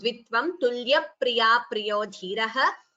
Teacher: So tulya priya, that p is heard. So double sound.